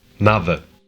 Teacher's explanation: The way those soft sounds work is different in Portuguese. European Portuguese has the soft D sound, while some Brazilian accents don't.